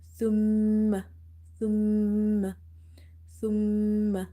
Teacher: whenever you see the shadda on top of meme, always read it by nasalization, by doing a nasalization in this sound. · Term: ghunna